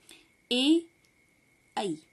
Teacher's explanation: कंठ तालु, मतलब इसमें भी दो जगहों का होता है, कंठ का भी तो और तालु का भी, तो कंठ तालव्य इसका नाम रखा गया है।